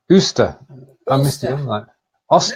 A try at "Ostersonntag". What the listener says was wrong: There's no Oster. There's no umlaut. Ostersonntag. It's a bit more of a longer O rather than a short O, so it's Oster.